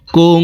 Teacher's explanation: কাফ নুন পেশ কুং, ইকফাহ গুন্না, নাকের ভিতরে লুকাইয়া গুন্নার সহিত পড়ব